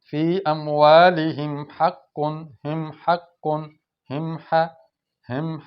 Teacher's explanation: میم پہ اظہار ہو رہا ہے، میم کو ظاہر کر کے پڑھ رہے ہیں، ناک میں نہیں چھپا رہے۔